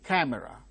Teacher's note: uttered with greater force camera because it is C C Sound occurring at the word initial stressed position it is aspirated